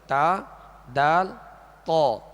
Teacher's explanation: تا، دال، طا ان کا ایک ہی مخرج ہے، اور وہ یہ ہے زبان کی نوک اوپر کے دانتوں کی جڑ. زبان کی یہ نوک اوپر کے جو 2 دانت ہیں سامنے والے، ان کی جڑ اندر کی طرف جو اس کی جڑ ہے یہ اس سے ادا ہوتے ہیں، یعنی ان کا ایک ہی مخرج ہے، تا دال تو۔